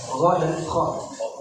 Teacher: huruf kha dengan huruf gha itu tempat keluarnya hampir sama di bagian tenggorokan paling atas